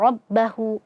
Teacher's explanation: rnya dibaca tebal karena fathah